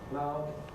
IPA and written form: maʊθ (mouth)